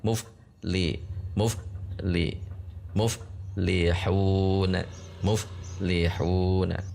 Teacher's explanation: Huruf fa itu makhrajanya pertemuan antara ujung gigi seri atas dengan bibir bawah bagian dalam. Jadi bibir atas tidak ikut. Yang bertemu hanya di sini ujung gigi seri atas dengan bibir bawah bagian dalam.